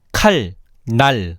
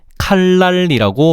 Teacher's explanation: 날의 초성 니은이 아음절 칼의 종성 리을의 영향을 받아서 리을로 바뀐 거야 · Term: 순행동화